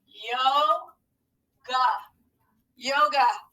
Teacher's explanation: that second syllable has our schwa sound